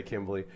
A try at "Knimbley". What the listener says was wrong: The K is silent, like a knife.